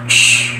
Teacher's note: And s as voice dental fricative. And sh as voiceless palatal fricative